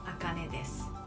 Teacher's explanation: You would pronounce desu, but it's more like des. So think about desk without a K.